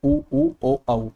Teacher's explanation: पश्चस्वर उन स्वरों को कहते हैं जिसमें हमारी जीभ का पिछला भाग ज्यादा क्रियाशील हो जाता है